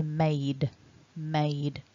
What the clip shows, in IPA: meɪd